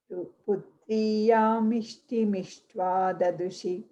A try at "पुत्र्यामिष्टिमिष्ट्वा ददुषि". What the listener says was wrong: Yeah, the pause is after Ishtva, not after Dadushi.